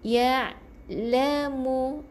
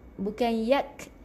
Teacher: Ya di halkum lelaki akan bergetar halkum dia.